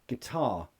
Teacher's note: Yeah, the first syllable is the weak form, and that has a schwa.